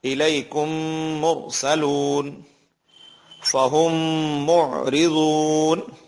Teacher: تیسرا قاعدہ ادغام شفوی کا ہے، میم ساکن کے بعد میم آئے تو میم کو میم سے ملا کر غنے کے ساتھ پڑھا جائے گا، یعنی ناک میں آواز جائے گی مکمل طور پہ